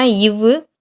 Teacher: கீழ் இதழும் மேல்வாய் பல்லும் இணைவதால் பிறக்கும் எழுத்து எதுனா இவ்வு.